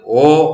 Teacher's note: ഇത് ഓവ് എന്നല്ല വായിക്കേണ്ടത്. ഓ എന്ന സ്വരത്തിന് ശേഷം വരുന്ന വാവ് ഉച്ചരിക്കുന്നില്ല, ഇത് ഓ എന്ന് വായിക്കണം.